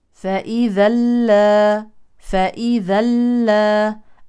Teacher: من احكام النون الساكنه والتنوين في الوصل هنا يليها لام اذا ادغام كامل بدون غنه